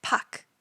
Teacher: even though in English we spell it as p-a-r-k it's actually pronounced without the r sound as Puck